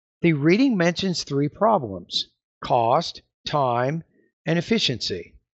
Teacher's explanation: However, if you have a colon, as in this example here, the tone's going to go up as you pause right before the colon there